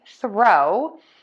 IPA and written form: θroʊ (THROW)